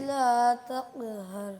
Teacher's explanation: یہ بیٹا جہاں سے کاف نکلتا ہے کا, اس سے بالکل پیچھے, بالکل ساتھ ہی جگہ ہے جہاں سے قاف نکلتا ہے. زیادہ پیچھے جانے کی ضرورت نہیں.